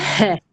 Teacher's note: Roh bor, mana shu halqumni o'rtasidagi h harfi arab tiliga xos bo'lgan. H harfi bu harfni talaffuz qilishlik uchun halqumimiz o'rtasini biroz siqishlik bilan talaffuz qilinadi.